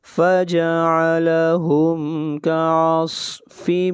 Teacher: صاد حروف مستعلیہ میں سے ہے، صاد کو موٹا پڑھیں گے